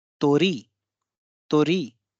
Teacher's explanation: इसमें री पे बल ज्यादा होगा, तो पे बल कम होगा,